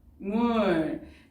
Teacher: 비음이 아닌 비읍과 비음인 미음이 만나서 최종적인 발음은 밤물. 비음이 아닌 비읍이 비음인 미음을 만나서 비음인 미음으로 바뀌었죠. 그래서 얘는 비음화가 일어났다고 볼 수 있겠습니다.